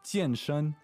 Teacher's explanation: that's fourth tone, first tone